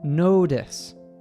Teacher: missing the t- sound from notice is between between two vowels so it becomes a tap t d sound